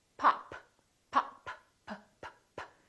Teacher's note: look at this word pop p pop look at my lips this is a stop because I'm stopping the air flow